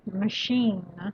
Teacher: put the stress on the last syllable okay machine it's something that you use in order to keep